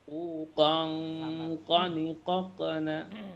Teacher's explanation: Ikhfanya qaf itu terdengar seperti eng ya.